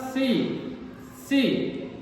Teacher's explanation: दांत और जुबान आपस में मिल रहे हैं